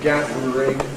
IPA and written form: ˈgæðr̩ɪŋ (gathering)